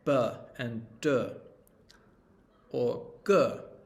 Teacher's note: voiced which is you turn your vocal cords on when you say it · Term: voiced consonant